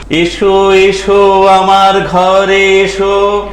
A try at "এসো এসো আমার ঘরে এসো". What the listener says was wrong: উচ্চারণটা ঠিক করবেন, বাইরে থেকে শুনতে লাগছিল এসো এসো, আমার ঘাড়ে এসো।